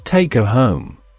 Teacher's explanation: One significant phenomenon involves the disappearance or weakening of certain sounds in rapid speech. The h sound at the beginning of words like him, her, and his often disappears when these words occur within a sentence.